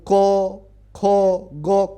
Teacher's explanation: जैसे कंठ से जब बोलना है तो क ख ग कंठ से उच्चारण होता है